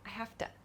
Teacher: this o sound in the to is a very quick sound too